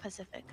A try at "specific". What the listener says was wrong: Specific? No, specific. You're saying Pacific, not specific. Yeah, Pacific's an ocean. Specific is yeah, specific's a like precise.